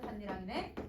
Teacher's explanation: 니은 첨가랑 음끝이랑 비음화 세 개의 단계가 거쳐져서 그래서 반니랑이 된다